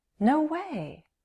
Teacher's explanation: Surprise is generally a strong emotion, and we often express this feeling with a rise-fall intonation pattern